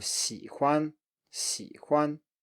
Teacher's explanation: And finally, for the third tone, we have third tone plus neutral tone, and that is, as we saw before, an exception from the rule that the neutral tone is usually lower than the preceding syllable. And here it's higher instead.